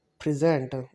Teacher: When we are gonna speak the word present, we will give the stress on the first syllable.